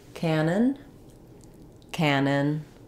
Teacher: they both have the same pronunciation which has first syllable stress